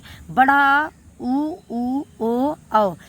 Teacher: बड़ा आ उ ओ औ ये सारे हमारे पश्च स्वर में आ जाते हैं